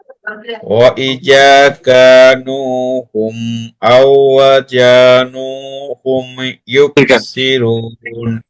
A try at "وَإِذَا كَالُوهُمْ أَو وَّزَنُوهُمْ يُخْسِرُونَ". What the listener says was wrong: জি পড়া ঠিক আছে, কিন্তু হরফ উচ্চারণে একটু ত্রুটি আছে। যেমন ওয়া ইযা দাল পাতলা হবে, আও ওয়া যা যাতে সিটে আওয়াজ হবে। জি আবার বলি, ওয়া ইযা ওয়া ইযা কালুহুম আও ওয়াজানুহুম